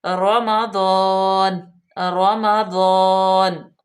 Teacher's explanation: را پہ زبر ہے تو را پر پڑی جائے گی